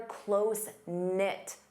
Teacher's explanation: Notice the K is silent.